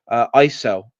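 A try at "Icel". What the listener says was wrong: just Ichel, I think, because With the letter C, if it's around the letter I or E in Old English, it pronounces as a ch sound. So,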